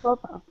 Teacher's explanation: You'd have an O sound. In the United States, we would say an ah.